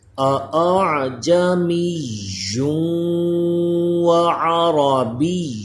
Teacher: عین کی آواز حلق کے درمیان سے آئے